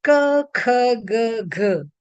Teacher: There is some kind of explosion. There is some kind of bursting of the uh, of the air coming out of the mouth. That therefore they are called plosives. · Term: plosive sounds